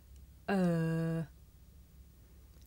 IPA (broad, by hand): ɜː